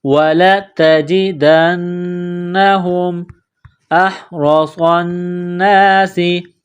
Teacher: ہے، وَلَتَجِدَنَّهُمْ أَحْرَصَ النَّاسِ، حمزہ کو ہا کے ساتھ ملانا ہے، گلے کے درمیان سے زور لگا کر ہا کو نکالیں گے